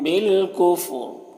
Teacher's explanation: وقف کریں گے تو را کا زیر سکون سے بدل جائے گا، تو پھر یہاں را کو پر پڑھیں گے وقفی کی صورت میں۔